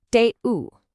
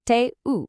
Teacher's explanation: in spoken French, tu es almost always gets squished down into te. This is a classic example of 2 words just becoming one single sound.